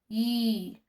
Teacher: Já o U umlaut já é mais fácil da gente conseguir gravar, que ele tem som de I. Só que esse I você vai falar I com boca de U.